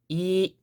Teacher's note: it's going to be a very flat sound again there's going to be a start and an end and my voice is going to remain steady at this kind of note of sorts so let's try to